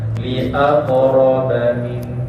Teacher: Jadi jangan lambatkan keluar bunyi qalqalah tu, terus je keluar.